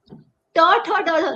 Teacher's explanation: मेरी जीभ और टर्न हो रही है और वो ऊपर लग रही है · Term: मूर्धन्य